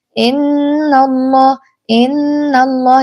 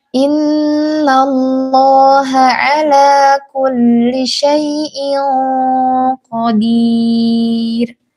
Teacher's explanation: diperjelas harakat kasrah huruf hamzahnya. Jangan sampai menjadi huruf E. Jangan innallah innallah.